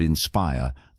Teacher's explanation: in the word inspire, the stress is on the second syllable.